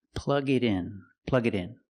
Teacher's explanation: The T in it changes to a fast D.